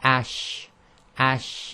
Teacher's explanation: the spreading of air between the tongue and the roof of the mouth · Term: spreading sound